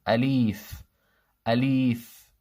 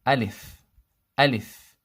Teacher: Second misprononunciation is stretching the lamb.